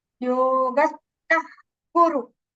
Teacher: In front of ka it becomes jihva mulya.